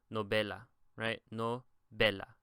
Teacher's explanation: So it's novela. So the be is the second to last syllable, and that is where we typically put the stress in Spanish.